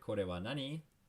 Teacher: raising your intonation makes that a question